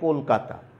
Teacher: কলকাতার এখানে যে আদ্য অ আছে, সেই অটার উকারান্ত উচ্চারণ পেয়েছে